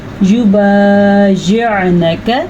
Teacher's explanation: عین کی آواز کلیئر آنی چاہیے کیونکہ عین کے اوپر ساکن ہے